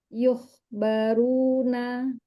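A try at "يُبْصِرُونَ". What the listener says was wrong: Runya tebal. Yuh baru. Yuh baruna.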